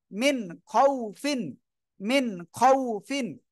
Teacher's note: জি, যেহেতু খ অক্ষর ইজহারের অক্ষর, নুন সাকিনের পরে ইজহারের অক্ষর খ আসছে, আমরা এজন্য স্পষ্ট করে পড়বো, গুণনা করব না।